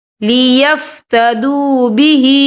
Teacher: ہا کے نیچے کھڑی زیر ہے تو ہم یہاں 2 یا 3 حرکت کے برابر کھینچیں گے۔